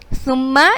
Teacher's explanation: اس میں سیٹی کی آواز نہیں آنی چاہیے، نرمی سے سا پڑھا جاتا ہے. ذال کی ادائیگی بھی اسی طرح ہوتی ہے.